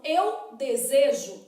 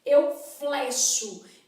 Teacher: na hora que eu conjugo o verbo desejar o E continua fechado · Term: e fechado